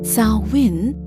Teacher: M is silent and therefore pronounced Samhain with stress on the first syllable